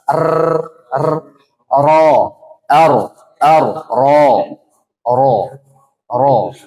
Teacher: takrir takrir ini artinya bergetar